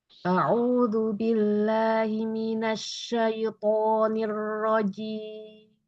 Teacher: syin tasdidinnya dengan ro tasdidinnya jangan terlalu lama ya dia bainiah aja